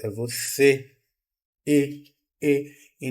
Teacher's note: para indicar uma forma correta de pronúncia Então eu tenho o acento circunflexo no na palavra você para indicar que esse e é fechado